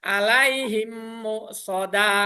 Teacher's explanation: cara bacanya memasukkan suara huruf mim mati ke dalam huruf mim setelahnya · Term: idgham mimi